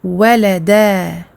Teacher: Il est écrit waladan, mais on prononcera walada parce qu'on s'arrête ici, on fait une courte pause parce que c'est la fin du verset. Et on ne gardera ici du tanwin qu'une seule fatha, mais par contre, on garde absolument la prolongation de 2 temps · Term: maddul iwad